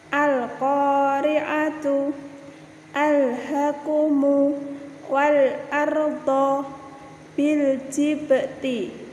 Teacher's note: alif lam qomariyah di mana lamnya terbaca jelas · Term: idhar qomariyah